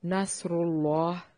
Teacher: حالت جزم میں نصر اللہ، لفظ اللہ کو موٹا ادا کریں گے کیونکہ پہلے حرف پر دمہ یعنی کہ پیش ہے۔ را کو بھی موٹا کرنا ہے، را کے اوپر دمہ ہے۔